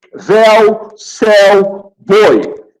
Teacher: Mas os ditongos podem ser classificados também em orais e nasais. Oral, quando sai pela boca, véu, céu, boi.